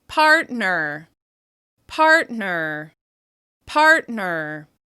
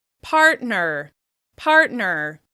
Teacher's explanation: You can hear a clear distinction between the stressed syllable in part and the reduced syllable in ner